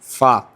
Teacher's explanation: چلیے آگے 14واں مخرج یہ فا, اوپر کے دانت یعنی ثنایا علیہ کا کنارہ, نیچے کے ہونٹ کی تری, یہ جب ملے گا, یہ ہونٹ کا جو باہر کا حصہ ہے اس کو خشکی بولیں گے, اندر کے حصے کو تری بولیں گے جو بھیگا رہے گا وہ. اب اوپر کے دانت کا کنارہ نیچے کے ہونٹ کی تری سے مل کر فا ادا ہوتا ہے